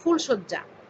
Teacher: আবার বেশ কিছু সমাসবদ্ধ পদ বাংলা প্রমিত উচ্চারণেও মধ্য অ এর জায়গায় হসন্ত উচ্চারণ প্রবণতা লক্ষ্য করা যায়। মধ্য অ এর জায়গায় হসন্ত উচ্চারণ করা হয়।